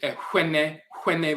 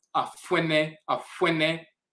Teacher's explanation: Some Akan people pronounce it Ehwene, Hwene, like a HW, and some pronounce it, as you see in the Akan dictionary here, with an FW, Afuene, Afuene.